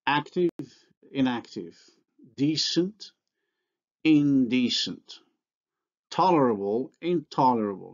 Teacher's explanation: the nasal is alveolar before alveolar consonants